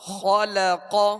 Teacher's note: خا اور قاف یہ دونوں حروف پر پڑھیں گے، موٹا پڑھیں گے، اس لیے کہ یہ حروف مستعلیہ میں سے، اور لام کو باریک پڑھیں گے.